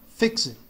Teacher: Esse T aqui no fim não se pronuncia.